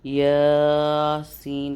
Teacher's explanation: کھڑا زبر کی جو ٹائمنگ ہے وہ ہے 1 الف یعنی کہ 2 سیکنڈ۔ اس کو 2 سیکنڈ تک ہم لوگ یاسین کر کے پڑھیں گے۔